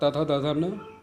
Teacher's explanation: त वर्ग, ल और श का दंत स्थान होता है